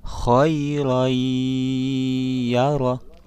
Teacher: Ya, ada tanwin fathatain bertemu dengan ya. Jadi suara tanwinnya melebur ke suara huruf ya dengan berdengung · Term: idgham bigunnah